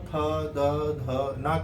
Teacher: जो वायु जो निकल रही है वो दांत पे टच करती है, दांत के थ्रू बाहर निकलती है, तो इसको हम कह देते हैं दंतस्य वर्ण।